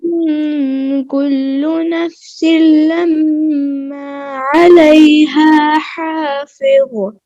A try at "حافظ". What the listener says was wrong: حافظ اس میں قلقلہ نہیں ہے ضاد میں حافظ فظ نہیں حافظ ان كل